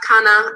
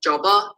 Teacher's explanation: These are two different roots that have two different tones, high tone and low high tone. But they're subject to replacive tone in different morphological categories.